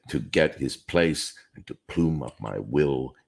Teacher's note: the five strong syllables in this line are to get Place plume will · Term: five strong stresses